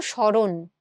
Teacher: তো এই দন্ত সময়ের জায়গায় আমি তালব্য স দিলাম এবং যুক্ত ম থাকার কারণে আমরা এটাকে একটু নাসিক্য করে চন্দ্রবিন্দু দিচ্ছি এবং র এর সাথে একটা অ যুক্ত আছে। এই অটা অ এর মতো উচ্চারণ না হয়ে ও এর মতো উচ্চারণ হচ্ছে।